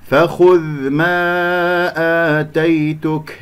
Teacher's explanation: فخذ ما آتيتك، انتبهوا إلى فخو، الخاء مفخمة مرتبة ثالثة لأنها مضمومة، نضم الشفتين فيها، ثم أرجع الشفتين إلى الوضع الطبيعي في الذال، والذال يجري فيها الصوت ولا يجري فيها النفس، غير مهموسة، ولا أقلقلها